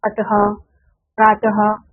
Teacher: वर्ण के अंत में लगने वाले इस चिन्ह को विसर्ग कहते हैं। इसका उच्चारण कंठ से आधे ह के समान होता है